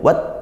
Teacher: Ini tak sukun kita kuatkan dulu, wat, kemudian disiskan